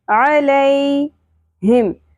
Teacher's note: ہا کو زور سے اقصی حلق سے نکالنا ہے · عین وسط حلق سے ادا کرنا ہے باریک آواز میں